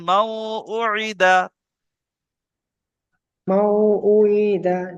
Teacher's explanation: তাই নুন তাই সাকিনকে তাই নুন সাকিনকে এক আলিফ গুণা ওয়াওয়ের করে সাথে পড়তে হবে। মিলিয়ে, ওয়াওয়ের সাথে মিলিয়ে একালিফ গুণনা করে পড়তে হবে। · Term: ঈদগামে নাকিস